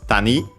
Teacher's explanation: Accented on the last syllable.